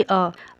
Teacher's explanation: अ को बोलने में जो है ओट जो है गोलाकार नहीं हो रहे हैं